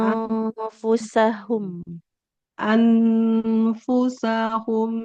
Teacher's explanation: huruf fa itu tidak bibir dengan bibir tapi posisinya bibir bawah nempel ke ujung gigi atas